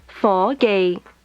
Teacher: Is mid rising, mid level.